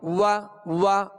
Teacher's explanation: واو کا جو مخرج ہے پہلے اس کو مخرج سے ادا کریں گے. واو دونوں ہونٹوں کی گولائی سے ادا ہوتی ہے. وا اب زبر ادا ہوئی.